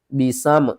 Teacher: میم کے اوپر آپ نے غنہ نہیں کرنا